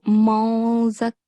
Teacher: We have to perform ikhfa, which means hide or mask the sound of N.